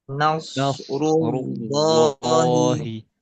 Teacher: kalau yang ini ru ya tebal lam juga tebal